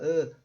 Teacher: a língua nem levantou do chão da boca